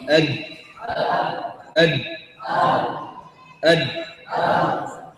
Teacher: أصول الثنايا العليا تخرج الدال والتاء